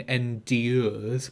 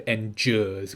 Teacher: It's the difference between endures with a d and endures with a j.